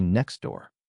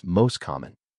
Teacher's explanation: I don't say next T door. I say next door. The T disappears. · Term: elision